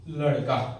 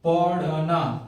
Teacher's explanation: इसका उच्चारण क्या होता है, तो जो आपको मैं मूर्धन्य बताया, ठीक है ना, उसी के जैसे होता है। जीभ का आगे का भाग क्या होगा, है ना, ऊपर उठेगा, मुड़ेगा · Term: उच्छिष्ट व्यंजन